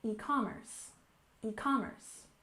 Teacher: e-commerce. And we stress the second syllable, e-commerce, e-commerce.